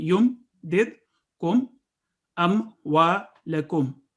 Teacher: یعنی صرف 1 سیکنڈ کے لیے میم ادا کریں گے، اس کو لمبا نہیں کریں گے · دونوں ہونٹوں کو ملانے سے میم ادا ہوتا ہے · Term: اظہار شفوی